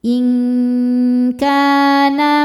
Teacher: Sebab ada alif yang sebelumnya fathah. Cara bacanya panjang kafnya dua harakat. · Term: mad thobi'i